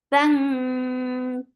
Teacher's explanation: This ikhfa is light, so keep your tongue straight. Bang. Ka is light and the sound is short.